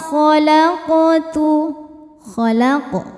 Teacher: qof sukun dan berada di tengah-tengah bacaan cara bacanya dipantulkan dengan pantul yang kecil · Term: qalqalah sugro